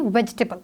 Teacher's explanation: हम इसको प्रोनाउंस करते वक्त बोलते हैं वेजिटेबल, तो ई जो है उसकी साउंड नहीं आती है, that's why वी have 3 syllables in this word.